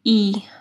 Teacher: زیر کو ہم لوگ اکثر اے پڑھتے ہیں، تو اے نہیں پڑھتے، ای